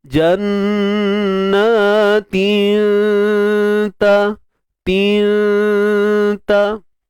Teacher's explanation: Kita sembunyikan tanwin tu dan dengung nipis. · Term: ikhfa hakiki